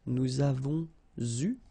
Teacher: here you can see that we make double liaison